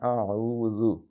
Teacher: ذا کو ہاں سیٹی نہیں مارنی